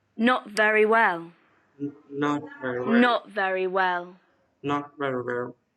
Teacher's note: in this sentence the stress is on not and well not very well and remember the falling pitch not very well